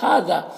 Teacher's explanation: الف مدہ ہے، ایک الف کے برابر کھینچیں گے۔ ھذا، ہاں میں کھڑا زبر ہے اور ذا میں الف مدہ ہے، یہ دونوں کو ایک الف کے برابر کھینچیں گے